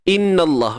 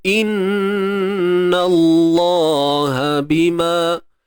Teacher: huruf nun yang bersabdu nun bersabdu macam biasalah tuan-puan ya. Kena dengung kadar 2 harakat.